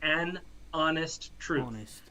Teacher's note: you don't really pronounce the H in honest